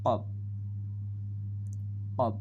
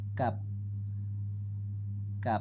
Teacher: কব গলার ভিতর থেকে, আর কাপ গলার ভিতর থেকে না, গলার বাইরে থেকে